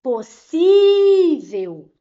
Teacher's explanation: A penúltima sílaba foi a mais forte, então sim, ela é uma palavra paroxítona. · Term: sílaba tônica